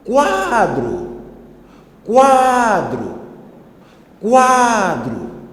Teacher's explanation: Na palavra quadro, a sílaba tônica posiciona-se no penúltimo lugar. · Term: penúltima sílaba